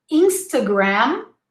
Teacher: the first a is the schwa